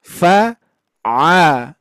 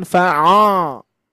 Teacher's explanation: A jadi bunyi ujungnya a a sama ya. Jangan sampai o.